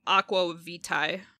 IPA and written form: ɑkwə vitai (aqua vitae)